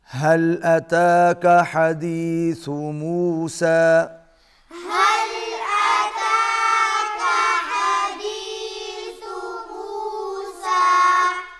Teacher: اس کے بعد حمزہ ہے، حمزہ کو جلدی سے ادا کرنا ہے، کا کو باریک پڑھنا ہے اور ہا کو پھر وسط حلق سے ادا کرنا ہے۔